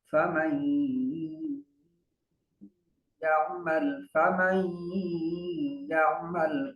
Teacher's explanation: یرملون میں سے کوئی حرف آ جائے گا تو غنہ ہوگا، نون ساکن کو پڑھیں گے نہیں تو میم کو یا سے ملائیں گے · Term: ادغام مال غنہ